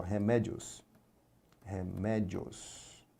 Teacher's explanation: ditongo crescente aqui no final. Ditongozinho crescente. O I semivogal, o O é vogal, ditongo crescente, então a gente pode separar também como remédios.